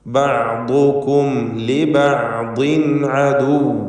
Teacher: സാക്കിനത്തായ മീമിനെ ഇൽഹാർ ഷഫവി നൽകി മണിക്കാതെ വെളിവാക്കണം